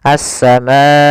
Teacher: panjangnya adalah empat harakat · Maka apabila ada hamzah datang setelah huruf mad dan hamzah tersebut berada dalam satu kata, maka dinamakan dengan mad wajib muttasil. Panjangnya adalah 4 harokat, maka kita panjangkan ma-nya 4 harokat.